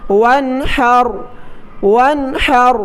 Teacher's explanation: نون ساکن پر غنہ ہونا چاہیے تھا لیکن ہا جو کہ حروف حلقی ہے اس وجہ سے غنہ نہیں ہوگا، اس لیے پڑھیں گے وانحر، وانحر بغیر غنہ کیے پڑھیں اور آخر میں را کو موٹا کریں کیونکہ ہا پر زبر ہے۔